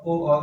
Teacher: ओ और औ का कंठोष्ठ, यानी कंठ और ओठ दोनों है